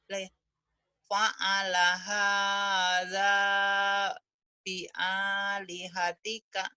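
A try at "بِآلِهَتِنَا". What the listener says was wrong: Bi'a di hatina. Bukan tika.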